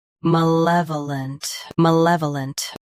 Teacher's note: Both US and UK have the same pronunciation of this word. Stress luh. Keep vuh soft and finish with lunt clearly.